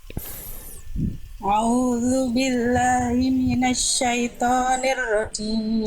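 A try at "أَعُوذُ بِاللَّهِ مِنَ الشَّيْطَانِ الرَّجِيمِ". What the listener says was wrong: Oh, jelaskan hamzahnya Bunda.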